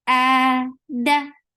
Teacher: Hamza is very sharp and it is 2 counts long.